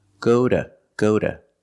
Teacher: when two is after a vowel and before a consonant example go to the store is pronounced Goda Goda using a fast D and the short schwa sound